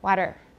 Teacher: it turns into a voiced sound but it's not a d it's just a very quick contact between the tongue tip and the alveolar ridge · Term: tap